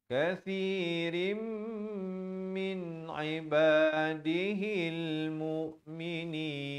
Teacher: Kathirim di sini masuk berserta dengung.